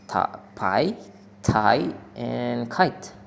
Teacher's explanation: The voiceless plosive p, t, and k are aspirated at the beginning of the stressed syllable, meaning that a small burst of air is released after the stop sounds. This is particularly noticeable in words as pi, tai, and kite.